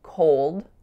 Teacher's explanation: The first vowel is an O sound going right into a dark L